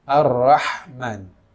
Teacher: Ha pada kata-kata Ar-Rahman ini terletak di tengah tenggorokan. Ya. Kalau diajarkan dulu ketika kita mengaji seperti orang kepedasan.